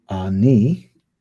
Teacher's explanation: our vowel blend of the patak and the sheva, which is short ah